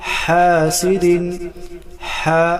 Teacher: حا وسط حلق گلے کے درمیان سے ادا کریں گے